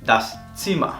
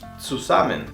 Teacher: La Z, al principio de la palabra, se pronuncia como una TS.